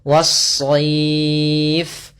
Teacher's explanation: Awalnya al-sayf, tapi karena dia tidak bertemu dengan huruf shad, maka lamnya diidghamkan ke huruf setelahnya sehingga lamnya hilang. Sehingga kita langsung membaca shadnya tasydid. Was-sayf. Kemudian pada lafal as-sayf di sini ada bacaan mad lin, yaitu apabila ada fathah bertemu dengan ya mati dan berada di akhir bacaan.